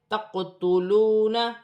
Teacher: قاف ساکن ہے، قلقلے والے حرف میں سے ہے، قلقلے کے ساتھ ادا کیا جائے گا، جیسے تقتلون۔